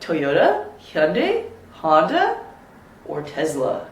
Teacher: So it goes up, up, up. The last one always goes down